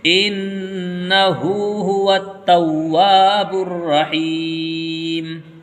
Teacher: الٹا پیش برابر ہوتا ہے واو مدہ کے، اس لیے الٹا پیش کو بھی کھینچ کر کے پڑھیں گے